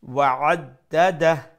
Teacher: make sure you pronounce the ain from the middle of the throat